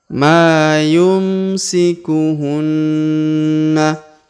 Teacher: huruf Ma kita panjangkan dua harakat karena di depannya terdapat Alif ya Maa yumsikuhunna huruf na berharakat tasdid maka kita tahan dan